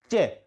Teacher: च बोलने पर जीभ बीच में से ऊपर लगती है